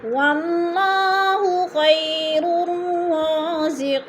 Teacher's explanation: رازقی قی پہ بھی یا مدہ ہو رہا ہے یا ساکن سے پہلے قوف کے نیچے زیر ہے تو یا مدہ کو ایک الف 2 حرکات کے برابر لمبا کر کے پڑھنا ہے